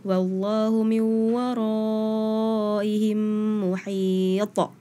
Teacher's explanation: itu di Qalqalah Kubro ya, di akhir, jadi harus mantep gitu